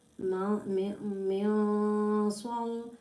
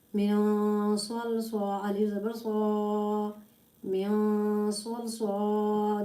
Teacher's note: Swad has a thick sound because this is a musta'aliya letter.